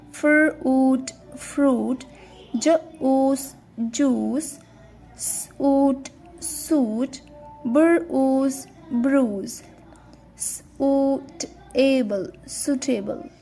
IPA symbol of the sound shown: oo